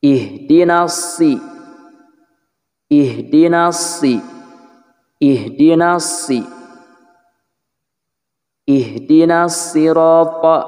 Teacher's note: Ujung lidah dikenakan pada ujung gigi seri bawah, kemudian pangkal lidahnya terangkat karena shad memiliki sifat isti'la dan itbaq.